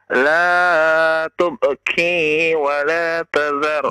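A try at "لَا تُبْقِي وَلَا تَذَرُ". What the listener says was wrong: La tubqi huruf qaf ya. Jangan ki tapi qi.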